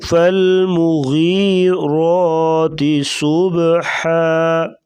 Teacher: غین کو پر پڑھیں گے، موٹا حروف ہے اور یا مدہ ہے، اسے لمبا کریں گے 1 الف کے برابر۔ را کے اوپر کھڑا زبر، زبر 2 زبر 2 پیش ہوں گی تو اس کو را کو موٹا کر کے پڑھا جائے گا۔